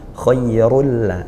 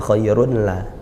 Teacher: Jadi tanwinnya tidak ada bekas tanwinnya, tidak ada bunyi tanwinnya, langsung masuk ke lamnya. Khairul la, bukan khairun la, seperti itu. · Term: idgham bila gunnah